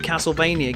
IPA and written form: ˌkæsəlˈveɪniə (Castlevania)